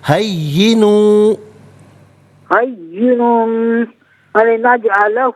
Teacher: تنوین کی آواز نہیں آئے گی، واو کی آواز کو ادا کیا جائے گا